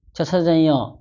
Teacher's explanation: चवर्ग बोला जाता है तालू से